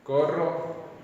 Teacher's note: una o abierta en la cual la separación entre los labios y entre las mandíbulas es algo mayor que en la o cerrada